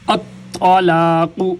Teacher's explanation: طا بھی موٹا قاف بھی موٹا